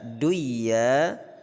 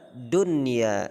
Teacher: nun sukun bertemu iya, maka tidak kita baca duya tapi kita baca dunya, jelas. Itu disebut dengan idhar mutlaq.